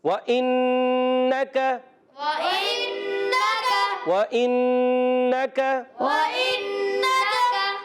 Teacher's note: व इन्नका हमज़ा है, ये अलिफ नहीं क्योंकि इसके नीचे ज़ेर है। और नून मुशद्दद, एक अलिफ का गुन्ना करेंगे।